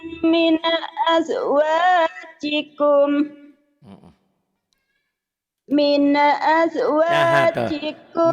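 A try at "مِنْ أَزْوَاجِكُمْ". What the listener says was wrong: Mine, hati-hati. Mine, jangan mine. Nah, itu penyakit lamamu, kambuh ya. Min. Sigimin. Wagimin. Min.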